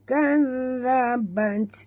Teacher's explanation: Okey, bunyikan hamas pada huruf ta.